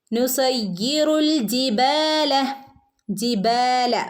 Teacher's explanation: ബഇന് അലിഫ് മദ് ഉണ്ട്, രണ്ടനക്കം നീട്ടി കൊടുക്കുക